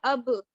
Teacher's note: یعنی میں نے اس کو پروناؤنس کیا اب، تو مجھے یہ فیل ہوا کہ میرے جو دونوں ہونٹ ہیں ان کا جو تر حصہ ہے وہ آپس میں ٹچ ہوا ہے